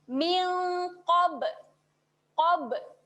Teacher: Kat sebelahnya ba bertanda sukun ini. Bunyikan qalqalah, lantunan pada bibir, rapatkan bibir kemudian kita buka.